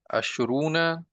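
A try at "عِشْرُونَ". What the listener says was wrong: इशरूना, बिकसर आइन, बिकसर आइन, इशरूना। इशरूना।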